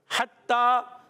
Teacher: हा की दाई हलक के दरमियान वाले हिस्से से, ता मुशद्दद है, ज़रा रुक कर अदा करना है, और ता पर खड़ा ज़बर है, एक अलिफ खींचना भी आपने।